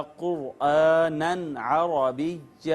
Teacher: آواز نہیں چھپائیں گے، اخفا نہیں کریں گے بلکہ اظہار کر کے پڑھیں گے اور اس کو یوں پڑھا جائے گا قرآنًا عربیہ، یوں نہیں پڑھیں گے قرآنًا عربیہ، آواز نہیں چھپائیں گے بلکہ اظہار کر کے پڑھیں گے۔